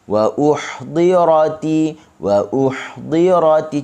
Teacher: Huruf ha rakhawahnya pendek sahaja